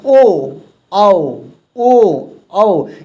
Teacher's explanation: ओ औ इसका जो उच्चारण स्थान है ना वह कंठ से हो रहा है। जैसे आपका क होता था ना उसी तरह इस ये भी हो रहा है। · ओ औ इसका मतलब देखिएगा कंठ से हो रहा है, लेकिन इसके उच्चारण में कंठ का प्रयोग तो हुआ ही हुआ है, लेकिन याद रखेंगे इसको बोलने में आपकी जो मुंह का जो ओष्ठ है ना दोस्तों, याद रखेंगे आपका ओष्ठ है ना, दोनों ओष्ठ गोल हो रहे हैं